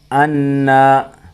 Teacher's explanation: اَنَّا مشدد ہے نون اس لیے غنہ ہوگا